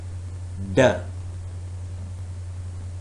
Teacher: the narrowing of the vocal tract involves the tongue tip and the alveolar Ridge